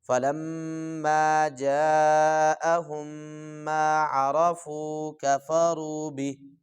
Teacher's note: جاء بڑا مد ہے اس کو اچھے طریقے سے لمبا کریں گے